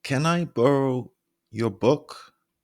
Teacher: I borrow your book and as you can hear my voice the pitch falls on book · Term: downward inflection